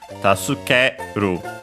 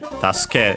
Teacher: so low, high, high, and then low for the ru